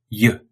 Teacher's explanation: When you say that y sound, the middle of your tongue raises up towards the roof of your mouth.